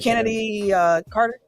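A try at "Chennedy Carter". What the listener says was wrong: Oh, it's CH.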